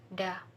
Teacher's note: voiced alveolar stop sound, letter Da.